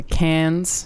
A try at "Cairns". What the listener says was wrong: Wait, she means Cairns, not cans. It's got an R in it, Australians. Cairns.